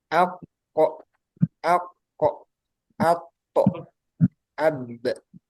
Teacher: salah satu kesalahannya yaitu pantulannya ada tambahan huruf hamzah. Hamzah yang sukun.